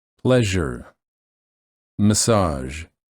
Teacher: the tip of the tongue is down the sides of the tongue are up against the upper teeth on the sides of the mouth and the air flows out through the middle of the tongue